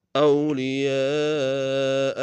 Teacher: اولیاء میں یا کے ساتھ الف مدہ کے اوپر مد متصل ہے، کم سے کم تین الف انداز میں کھینچیں گے